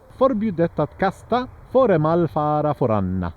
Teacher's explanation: it's kind of singing at the end though, not all the way through.